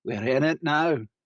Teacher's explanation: short I sound becomes ah